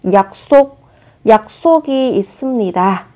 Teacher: Khi phát âm các bạn chú ý gấp đôi phụ âm sờ lên.